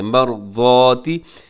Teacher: اس میں را موٹا پڑا جائے گا کیونکہ را ساکن سے پہلے زبر ہے